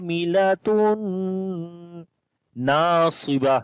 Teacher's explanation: Noon we long due to alif madda. · After the tanween, the next is noon. Like also noon has a shadda sign, so we make gunna. Idgham with gunna.